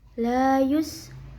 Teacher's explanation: sinnya punya sifat sofir ada desisanya dan hamas ada angin